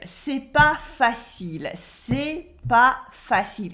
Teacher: It's not easy in casual French. And she dropped the ne in the negative.